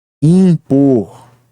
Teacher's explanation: o IN representa um único som, o som da vogal nasal IN